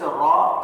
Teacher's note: زبان کی نوک اور اوپر کے دانتوں کے مسوڑوں کے لگنے سے را پر پڑھیں گے موٹا را.